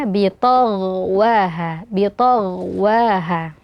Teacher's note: Ghain di sini juga dibaca tebal karena sukun sebelumnya fathah dan dia ada aliran suara ya.